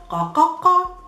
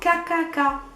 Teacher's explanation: Qa, it's a guttural qa. Come from the deep in the throat.